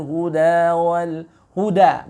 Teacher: Wa bayyinatin minal huda wal huda, bukan huda ya, huruf dal yang keluar dari ujung lidah dengan pangkal gigi seri atas ya, bukan za, huda tapi huda wal furqan ya.